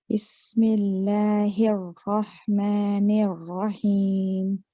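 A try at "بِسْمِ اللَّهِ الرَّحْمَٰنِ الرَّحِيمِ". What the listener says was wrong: When you're saying it in isolation, it's better. When you're putting it in, because you're saying other letters and then you're moving on to the Ra, it's just you've got to it's a little bit weaker.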